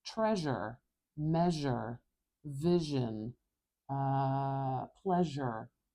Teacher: this sound is the voiced partner of the sh sound